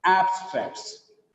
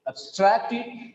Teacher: Because just because of the stress, the same letters AB gets different sounds. When it has got the stress, it is ab. When there is no stress on AB, it is up.